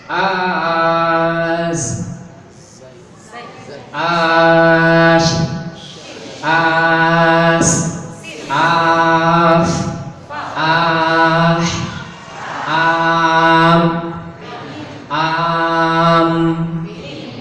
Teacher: Anda akan menyebutkannya dengan satu harokat saja.